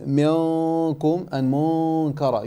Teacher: So here when you recited minkum and munkara, you said minkum and munkara. You made the ghunna full mouth where it should be empty mouth.